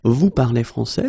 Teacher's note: But in many situations, especially when we talk, we can keep the same order. We just need to raise the voice at the end. So of course, l'Académie Française would like me to put them in the other order, but basically you will hear many French people and many French-speaking people just keep the same order and raise their voice at the end.